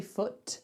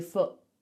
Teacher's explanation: It's like someone just goes, just closes our throat. So when I say my foot, I just stop the air coming out of my throat. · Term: glottal stop